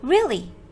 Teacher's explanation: Trọng âm rơi vào âm tiết thứ nhất.